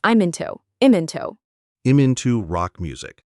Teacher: The M in I'm links to the I in into.